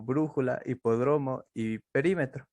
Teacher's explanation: las palabras esdrújulas acentuadas en la antepenúltima